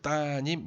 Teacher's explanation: 리을이 니은을 만났죠. 리을이 떨어져 나가요. 이해되나요? 그래서 따님 이렇게 됩니다.